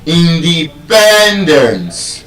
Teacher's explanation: It's a polysyllabic word, and because of the penultimate stress rule, instead of being stressed on just any syllable, it is stressed on the second to the last syllable